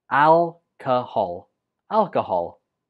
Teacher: second syllable uses the shua, so it takes a weak form. And the stress goes on the first syllable.